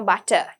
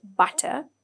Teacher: We don't have the r sound.